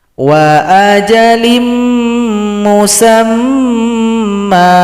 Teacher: cara berhentinya mim yang fathatain menjadi fathah, dengungkan dulu, kemudian kita panjangkan 2 ketukan. Karena ini merupakan mad iwad.